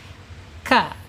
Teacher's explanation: Kaf ini menyentuh langit-langit yang agak berdaging ya sedikit ya.